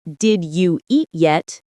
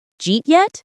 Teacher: Instead of did you eat yet, it becomes jeet yet. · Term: reductions